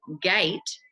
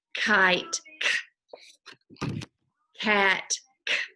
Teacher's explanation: So G is voiced, gate is voiced, kite and cat are unvoiced.